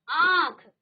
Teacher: आपका मुख भी खुल रहा है, साथ में आपके नाक से भी वायु बाहर आ रही है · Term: अनुनासिक